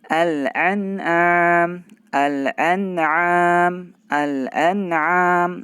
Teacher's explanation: Nah, alnya kita baca, ya kan, terbaca karena dia adalah idhar qamariyah.